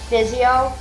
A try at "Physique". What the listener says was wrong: No, it's actually a Q.